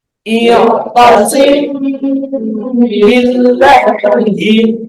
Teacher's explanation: ditahan mim sukunnya sambil disamarkan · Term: ikhfa syafawi